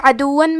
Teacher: کلمت عدون میں عین کی ادائیگی حلق کے درمیان والے حصے سے ہے